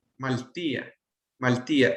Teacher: Ajá, entonces por eso es que se acorta cuando, o pierde una vocal cuando está en presencia de otras vocales